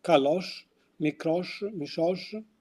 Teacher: the palatal pronunciation of S which is pronounced sh